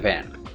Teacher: into contact with the lower lip to obstruct the airflow however there is room for air to pass between the teeth and lip continuously